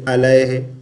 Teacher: عین کو حمزہ نہیں پڑھیں گے